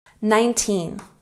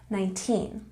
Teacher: don't forget the emphasis on the second syllable